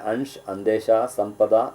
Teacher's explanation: ಮೂಗಿನಿಂದ ಉಚ್ಚರಿಸಲ್ಪಡತಕ್ಕಂತಹ ಧ್ವನಿ ಅಂ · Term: ಅನುಸ್ವಾರ